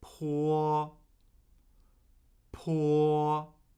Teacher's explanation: first tone, high, flat, and unchanging